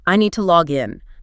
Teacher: >> When native speakers use the verb phrase, the action of entering the account, they put a slightly heavier stress, a little more breath, on the second word. >> On the in.